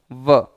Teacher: ऊपर के दांत नीचे के होठ को स्पर्श करते हैं, व शुद्ध उच्चारण करेंगे व।